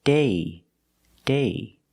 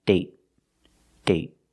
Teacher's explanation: with date, we see the vowel is shorter because you have a stop T at the end.